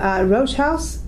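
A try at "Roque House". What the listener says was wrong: You said Rogue against Rock.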